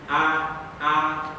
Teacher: Jadi tidak hanya buka secara mulut, akan tetapi betul-betul berbunyi A, tidak setengah-setengah antara A dengan E.